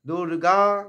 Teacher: দুর্গা দু হর্ষ আছে, তারপরে গাটা দীর্ঘ আছে, মধ্যখানে রেফের জন্য অর্ধেক রা।